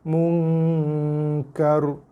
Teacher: Nun mati jumpa dengan kaf ikhfa hakiki. Munkar. Bukan kar.